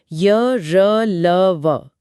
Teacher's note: हाँ, ये ध्वनियां स्वर और व्यंजन के बीच की स्थिति में है। इन्हें बोलते समय जीभ मुंह के किसी हिस्से को पूरी तरह नहीं छूती, बस करीब जाती है, जिससे हवा का रास्ता थोड़ा संकरा हो जाता है। अच्छा। इसीलिए इनमें कंपन या बहाव ज्यादा होता है, जैसे र या ल में। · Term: अंतस्थ व्यंजन